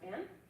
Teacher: final consonant cluster reduction means that you're not pronouncing the final D in band. So it's going to sound more like the word ban.